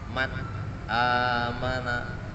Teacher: nun sukun bertemu dengan huruf hamzah atau alif. Man amana harus jelas nunnya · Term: izhar halqi